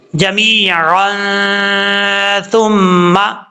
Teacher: नून तनवीन का इख्फा, एक अलिफ की मकदार गुन्ना करके पढ़ा जाएगा